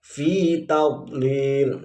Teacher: makhrajul hurufnya adalah pipi bagian dalam, entah kanan atau kiri atau keduanya. Jadi agak mengembang biasanya.